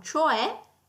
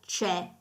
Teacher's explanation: Attenzione che nel linguaggio corrente comune, nel parlato di tutti i giorni, cioè a volte viene pronunciato talmente velocemente che potrebbe essere confuso con c'è